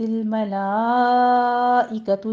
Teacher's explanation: ملائکۃ میں مد متصل واجب ہے، 5 کاؤنٹ کریں گے